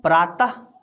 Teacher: विसर्ग जिसको ह के रूप में उच्चारण करते हैं